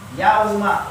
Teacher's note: Apa yang ditahan? Huruf lamnya ya. Dia tidak satu ketuk, tetapi dia ditahan. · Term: tertahan